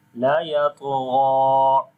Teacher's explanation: here we are longing ghain due to standing fatha on it. And you can see here on the ghain there is mad sign also, which is called madde munfasil. · on the ta we also make qalqala, which is weak qalqala, as the qalqala letter is coming with sukoon sign in the middle of the word. So we say la yatgha, and here we are longing ghain due to standing fatha on it.